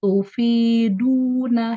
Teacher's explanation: karakteristiknya tidak ditampilkan, menyebabkan dad berubah menjadi dal